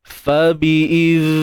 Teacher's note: pastikan kita alirkan juga suara, menunjukkan ar-rakhawah, sifat rakhawah pada huruf zal tersebut